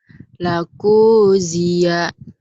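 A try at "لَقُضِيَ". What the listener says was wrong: Kenapa panjang kunya ya? Lakudiya. Dod. Lakudiya. Lakudiya.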